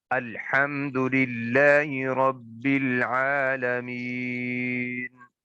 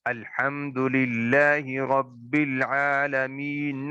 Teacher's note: نون کو میں نے ساکن کیا ہے، حالانکہ نون کے اوپر زبر ہے